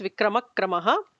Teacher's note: So the visarga is kind of ignored. So it becomes Vikramakramaha. The visarga is not pronounced.